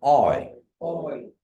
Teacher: So we have the A-U-I, and it makes the sound. You say aw, and then just say E at the end. So I. Everybody repeat after me.